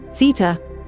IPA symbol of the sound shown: θ